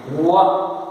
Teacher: व बोलते समय लिप राउंड हुए, दोनों लिप्स राउंड हुए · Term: कंसोनेंटल साउंड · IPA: /w/